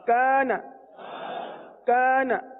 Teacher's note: اس الف کو جو کہ کا کے ساتھ ہے، کاف الف زبر کا، اس الف کو باریک پڑھیں گے، وجہ یہ کہ الف سے پہلے والا حرف کاف باریک ہے، اس لیے الف کو بھی باریک پڑھیں گے